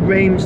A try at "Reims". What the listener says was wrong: Is it not just Rem? I think it's just Rem. I don't think the French pronounce their S's.